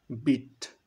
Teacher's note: আমাদের জিহ্বার যে উচ্চতা এটা একদম হাইতে থাকে উঁচু উপরে থাকে